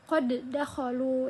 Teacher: Penjelasan yang ketiga ada idgham mutamatilain. Bertemunya dua huruf yang sama baik makhraj dan sifatnya. Huruf pertama diamkan menjadi huruf kedua. Baik terdapat dalam satu kata maupun di lain kata.